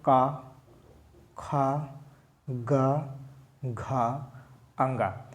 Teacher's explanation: कंठ व्यंजन, जिसकी ध्वनि गले से निकलती हो। ठीक है, मतलब कंठ से जिसका प्रवाह होता हो, जिसका निकलना होता हो, उसको हम क्या बोलेंगे, कंठ व्यंजन।